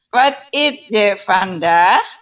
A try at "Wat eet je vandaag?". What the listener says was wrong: Hanya diperbaiki, bukan it. What ate, bukan it. It itu seperti bahasa Inggris, tapi ini what ate, what ate.